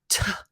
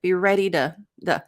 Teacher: the T became a flap T. So it was not overly aspirated, not t, but be ready to the.